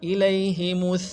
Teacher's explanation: لئی جو ہے یا لین ہے، اس کو نہیں کھینچیں گے